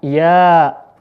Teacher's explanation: dibaca panjang dua harakat itu Mad thi'i